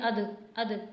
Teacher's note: اد پہ قلقلہ لازمی کرنا ہے کیونکہ دال حروف قلقلہ میں سے